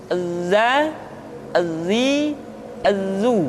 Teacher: dalam huruf latin tetapi ingat huruf dza bersifat Al Jabbar artinya ketika kita mengucapkan huruf dza suara kita mengalir akan tetapi nafas tidak boleh mengalir